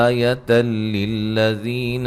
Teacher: یہاں نون تنوین کا ادغام بلا غنہ ہے، غنہ نہیں کریں گے